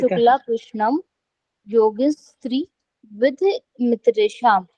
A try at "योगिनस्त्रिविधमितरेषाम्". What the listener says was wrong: इसको स्त्री पर रुकना नहीं है, आपने इकट्ठा ही बोलना है, क्योंकि योगिनस अलग है और त्रिविधम अलग है। ठीक है, तो योगिनस त्रिविध विधि मित्रेषाम।